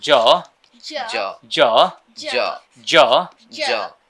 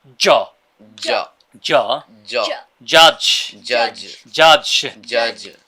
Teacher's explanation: Ja জ Ja জ Ja এটাও একইভাবে জিহ্বার মাঝখানের অংশটা উপরের তালুর সাথে ধাক্কা খাবে, রাইট? জ।